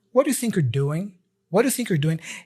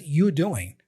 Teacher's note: He doesn't even pronounce the R for you're doing here. It's like there's no R, and he just says, you doing.